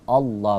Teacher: Alif lamnya itu lamul jalalah itu sebenarnya satu-satunya tempat yang ketika lam dibaca tebal di tempat lain tak ada khusus dikata Allah itu tebal Allah